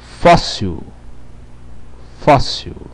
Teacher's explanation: É átona. Como é que eu vou saber se é átona? Simples. A sílaba tônica é fós.